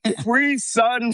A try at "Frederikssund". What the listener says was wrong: No, Frederik. That's Frederick. Frederik. Sound. Sun is sound.